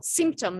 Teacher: the stress is on the first syllable, symptom, not symptom.